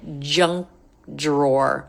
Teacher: now I'm not really hearing the K I think he's pretty much dropping it